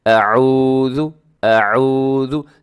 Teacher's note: ہم اس واو ساکن سے پہلے جب پیش ہو تو واو کو لمبا کر کے پڑھا جاتا ہے، حرف کو لمبا کر کے پڑھا جاتا ہے، کیونکہ یہ واو مدہ ہوتا ہے، اس سے تھوڑا سا لمبا کرنا چاہیے، اعوذ، اعوذ، جبکہ ہم کیسے پڑھتے ہیں؟ · اب یہاں کیا مسٹیک ہوتی ہے کہ اعوذ، ہم اس واو ساکن سے پہلے جب پیش ہو تو واو کو لمبا کر کے پڑھا جاتا ہے، حرف کو لمبا کر کے پڑھا جاتا ہے، کیونکہ یہ واو مدہ ہوتا ہے، اس سے تھوڑا سا لمبا کرنا چاہیے